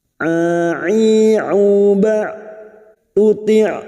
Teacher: Huruf ain memiliki sifat jahar dan tawasud.